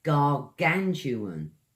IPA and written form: ɡɑːˈɡantjʊən (Gargantuan)